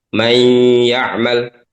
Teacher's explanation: maka nunnya hilang tapi sifat gunahnya masih ada. Ini namanya idgham naqis.